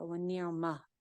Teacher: گول والی تا جو ہوتی ہے وہ گول ہا میں چینج ہو جاتی ہے